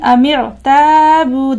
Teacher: الف مدہ ہے اور واو مدہ بھی ہے، لہٰذا 2 سیکنڈ یہاں پر کھینچ کر کے پڑھنا ہے